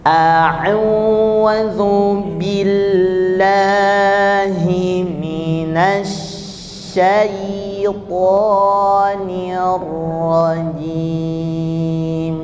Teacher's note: setiap lafaz Allah itu lam jalalahnya dua harakat Berarti a-nya ada dua